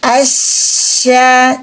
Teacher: ketika membunyikan huruf syin terangkatnya Tengah lidah kita Dorong Keluar napas kita dengan kuat